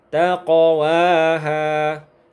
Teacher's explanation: Ketika huruf qalqalah yang 5 itu, yaitu ba, kemudian jim, kemudian dal, kemudian to, kemudian qaf, jika kita dapatkan dia sukun di tengah kata, maka itulah yang disebut dengan qalqalah sughra atau qalqalah kecil. Maka cara membacanya, pantulannya adalah pantulan yang kecil alias ringan.